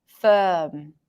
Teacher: In British English, you would pronounce a neutral vowel closer to a schwa sound.